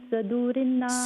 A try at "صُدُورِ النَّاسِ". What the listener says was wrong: صدو نہیں ہے ساتھ کے اوپر دمہ ہے صدو صدور الناس اکمل غنہ ہے فی صدور ساتھ پہ دمہ ہے الناس اکمل غنہ ہے